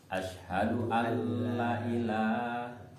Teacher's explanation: Berarti memasukkan nun mati atau tanwin ke huruf lam tapi tidak Dengung. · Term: Idgham bila kunna